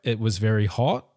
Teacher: Raise your verbal intonation at the end of a sentence. New Zealand English speakers typically inflect their voices upwards at the end of declarative sentences. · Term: Rising intonation, rising intonation